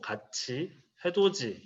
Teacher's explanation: 이거 풀어야 되겠다. 디귿과 티귿이 이와 만나서 지읒과 치읒으로 발음이 되는 경우